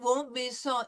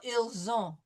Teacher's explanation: Zon. Okay, so it won't be son, ils ont. It'll be a Z sound.